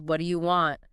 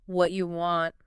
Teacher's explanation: Another classic example is what do you want? Which often morphs into what you want.